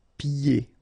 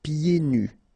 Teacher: Okay, so you don't hear the D.